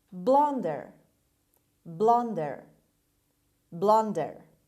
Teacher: the stress is at the beginning on the first syllable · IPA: /ˈblʌndər/